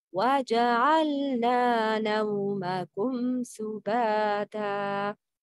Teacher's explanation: the sound of mim is clear because it's followed by seen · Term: al-izhar al-shafawi